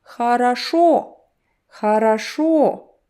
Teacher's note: Only last O sounds like actual O. The rest sound like A. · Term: vowel reduction